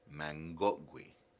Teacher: Ge, man becomes mang. Gotgui, for example, would become mangotgui.